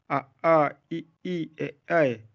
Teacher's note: जिन स्वरों के उच्चारण में ओठ वृत्तमुखी गोलाकार नहीं होते हैं, आ ई ए ऐ। वृत्तमुखी, जिन स्वरों के उच्चारण में ओठ वृत्तमुखी गोलाकार होते हैं, उ औ। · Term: आवृतमुखी